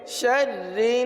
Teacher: را کو پر نہیں پڑھیں گے، را کو باریک پڑھیں گے